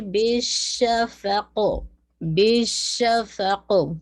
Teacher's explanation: زبان پھیلے گی، ہمس بھی ہے، بیش آپ کو پتہ ہے کہ ایئر باہر آ رہی ہے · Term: تفشی